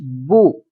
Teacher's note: پیش جو ہوتی ہے آپ دونوں ہونٹوں کو جب گول کریں گے تو اس طرح سے ادا ہوگی، جیسا کہ با پیش بو۔